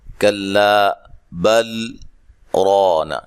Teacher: آواز کو ختم کیا لیکن سانس کو جاری رکھا, اسی سانس میں رانا کو پڑھا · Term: سکتہ